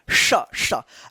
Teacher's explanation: जीव जो है ना तालू के ऊपर जाकर सटेगा तब जाकर आवाज निकलता है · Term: तालव्य श